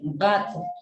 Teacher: Pronuncie gato pero exageradamente, gato, y se va a dar cuenta cómo el cuerpo de la lengua postdorso choca en la parte final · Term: velares